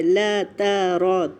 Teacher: لا ترى ایک ہی حرکت ہے، لا ترى، تینوں کی لینتھ ایک جتنی ہونی چاہیے، تینوں پہ فتحہ کی حرکت ہے